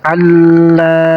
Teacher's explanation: Dan la-nya di sini panjang 2 harokat. Jadi mad tabi'i, huruf mad tabi'inya alif.